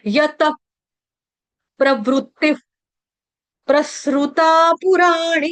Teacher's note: विसर्ग का उच्चारण हलंत फ की तरह करेंगे